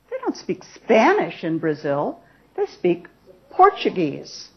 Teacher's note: emphasis on Spanish emphasis on Portuguese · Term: contrasting elements